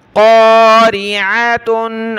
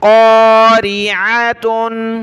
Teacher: आइन को निकालें गले से